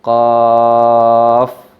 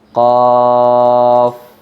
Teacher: Coba diperhatikan huruf qaf ketika kita baca panjang. Qaf. Nah, kan ada suara fa yang disukun. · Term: mad lazim mukhaffaf harfi